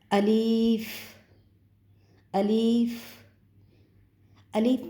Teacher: جوف دہن سے ادا ہوتا ہے